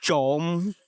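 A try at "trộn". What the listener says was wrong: You say chon or chom. Means to steal. Chon means to mix.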